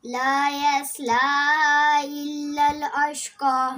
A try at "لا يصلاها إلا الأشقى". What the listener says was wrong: ये थोड़ा सा खींचना हा को, ऊपर मद है. لا يصلاها إلا الأشقى.